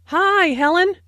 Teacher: Notice that the I sound in hi is extended to show that is very pleased to see Helen.